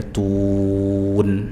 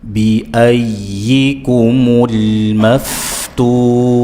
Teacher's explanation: tu mat arid lisukun 4 harokat dibaca dengan memonyongkan bibir dan nunnya dibuka ya, tun. Contoh, bi ayyikumul maftun.